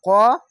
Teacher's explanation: এটি মোটা অক্ষর, আকার উচ্চারণ হবে না, কা হবে না